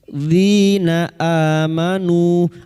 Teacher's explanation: Dzina amanu, bertemunya hamzah dengan mad badal 2 harokat kita panjangkan. Amanu, karena kita wakaf di sini maka 2 harokat dulu kita panjangkan, bertemunya mad dengan hamzah di lain kalimat, mad jaiz munfasil.